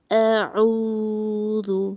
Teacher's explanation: حمزہ کو حلق سے صاف طریقے سے نکالنا. حمزہ اور عین دونوں کے آواز کو الگ الگ کرنا.